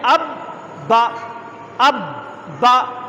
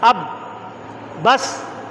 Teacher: تشدید میں جیسے ہونٹ چپکتے ہیں اور کھلتے ہیں، ہونٹ ملاتے ہیں اور کھولتے ہیں، تشدید میں یہ، اور جزم میں ہونٹ ملا کر بس رک جاتے ہیں